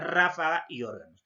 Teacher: la mayor fuerza de voz en la antepenúltima sílaba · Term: esdrújulas